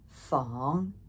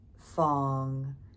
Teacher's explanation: just a low flat fong and a low rising fong